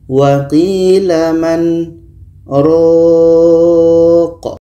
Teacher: Kita panjangkan ro, baru matikan huruf qaf.